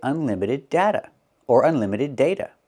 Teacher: You can use either vowel and change the T to a fast D.